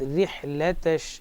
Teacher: یہاں پر را کو باریک پڑھیں گے کیونکہ را پر زیر ہے، را پر زیر ہو تو باریک پڑھیں گے، را ساکن ہو اس سے پہلے بھی زیر ہو تو باریک پڑھیں گے۔